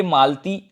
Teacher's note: ल आधा होगा बोलने में, लेकिन ल पूरा लिखा जाता है, यहाँ अ का उच्चारण नहीं हो रहा है